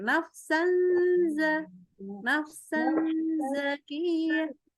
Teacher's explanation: lidahnya itu kayak mau baca Z tasydid lidahnya tapi yang keluar tuh bunyinya Nun karena kita masukin ke hidung